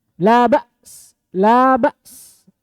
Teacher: Itulah bedanya hamzah dengan ain. Kalau hamzah dia syiddah. Begitu antum sukun langsung berhenti.